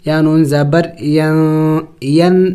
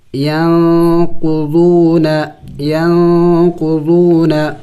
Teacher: اخفا کہتے ہیں ناک میں آواز چھپانا، جیسے کہ ہم یہاں پہ دیکھیں آواز چھپائیں گے نون کی، یعنی نون کو ظاہر کر کے نہیں پڑھیں گے، یا نون زبر ین نہیں پڑھیں گے، بلکہ نون کے آواز کو ہم چھپائیں گے۔